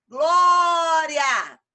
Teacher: penúltima sílaba mais forte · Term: paroxítonas